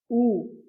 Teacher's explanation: звук у голосний коли ми його вимовляємо губи витягнуті вперед трубочкою повітря проходить вільно без перешкод ніяких шумів не чутно його можна вимовляти протяжно